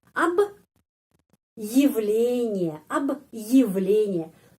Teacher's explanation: Jadi di sini kita stop sebentar ya dengan intonasi menyutup sebentar. Jadi ab di sini stop sebentar karena ada tanda penguat.